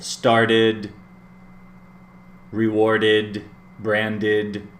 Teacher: And then in the third group, the ed sounds like id, id. It sounds like a syllable.